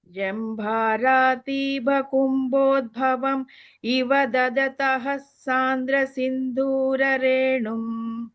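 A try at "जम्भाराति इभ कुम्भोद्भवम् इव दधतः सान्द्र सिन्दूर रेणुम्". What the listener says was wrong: ததக இருக்கு இல்லையா அந்த ஹ தான் வந்து இஸ் ஆயிடும் பின்னாடி சாந்தரவோட சேரும்போது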